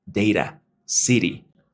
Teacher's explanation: En ese entonces esa persona me explicó que yo lo que necesito hacer con mi lengua es hacer ese movimiento de flap hacia adelante. En palabras como data, city, la lengua simplemente sube, hace el golpeteo.